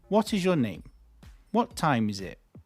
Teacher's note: So WH word questions, the intonation falls.